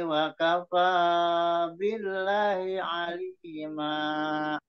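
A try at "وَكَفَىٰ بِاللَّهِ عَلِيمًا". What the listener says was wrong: Ya, billahnya jangan cepat-cepat juga di situ. Memang udah agak panjang, tapi agak-agak terlalu cepat. Billahi alima. Jadi Pak Memen kalau seperhatikan menghindari hi-nya panjang, kata Allahnya jadi ikutan pendek. Jadi kan tadi saya koreksi hi-nya dipanjangkan. Akhirnya dipendekin hi-nya, tapi Allahnya juga ikut pendek gitu. Jadi billah tetap lahnya tetap billahi alima billahi alima. Jadi jangan jadi jangan ikutan billahi alima.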